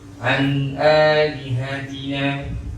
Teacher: Ini huruf izhar halqi. Hamzah ni kita baca dengan jelas dan nyata tanpa dengung